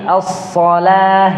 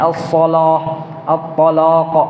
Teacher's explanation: bitadhaimil lam dengan membesarkan lam jadi as-shalah, at-talaq.